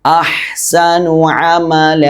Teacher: അഹ്സനു അമല ഐന് ശ്രദ്ധിക്കണം. ഐനിൻ്റെ മഖ്റജ് തൊണ്ടയുടെ നടുഭാഗമാണ്. നേരത്തെ ഹാഇൻ്റെ മഖ്റജ് പറഞ്ഞില്ലേ, അതേ സ്ഥാനത്ത് നിന്ന് തന്നെയാണ് ഐനും പുറപ്പെടേണ്ടത്.